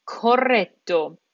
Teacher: we're hitting that t twice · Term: Double T